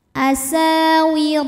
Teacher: huruf ro dibunyikan secara tafkhim karena ro berharakat fathah cara bacanya ditebalkan